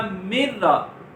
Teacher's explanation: ہم نون ساکن کو را سے ملا دیں گے تو یہ من را سے بن جائے گا مر را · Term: ادغام